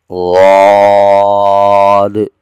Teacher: زبان کا کنارہ، زبان کی جو کروٹ ہے وہ اوپر کی داڑھوں کی جڑ سے لگ رہی ہے اور اس حرف کو موٹا ادا کیا جا رہا ہے اور آخر میں آنے والا جو دال ہے اس پر کلکلا ہو رہا ہے۔